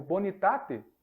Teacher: também em sílabas não iniciais adjacentes a tônica por exemplo bonitate o acento tônico tá em tá tá no ar essa vogal anterior pré tônica ela costuma cair